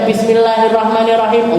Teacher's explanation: Nanti ketemu baca Bismillahirrahmanirrahim, Allahnya dipanjangkan, Ar-Rahmannya dipanjangkan, Ar-Rahimnya dipanjangkan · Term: Maddah